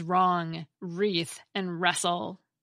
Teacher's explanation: Another long-lost cluster is WR, which has given way to the silent W in words such as wrong, wreath, and wrestle.